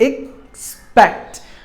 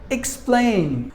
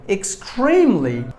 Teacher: There are 2 syllables in this word, and we have to stress the second syllable